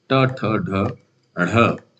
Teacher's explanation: जीभ का अगला हिस्सा मुड़कर कठोर तालु के ऊपर ऊंचे भाग मूर्धा पर 12 संख्या 12 को छूता है विकल्प ए दंत विकल्प बी तालु और विकल्प बी ओष् से उच्चारण और स्थान की दृष्टि से कौन सा जोड़ा असंगत है यानी कि गलत है ऐसे ही प्रश्न पूछे जाते हैं। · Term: मूर्धन्य